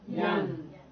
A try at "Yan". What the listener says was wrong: You're going yang. I gotta have the N. Yan.